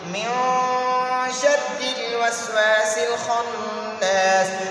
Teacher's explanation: ان نون ساکن کو ناک میں لے جائیں گے، ناک میں چھپائیں گے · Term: اخفا